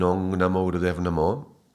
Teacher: Like in the Om, you are leaving the tongue back, but leaving a little bit of space. In the Ong, you really get to close completely, and all the air should come out through the nose.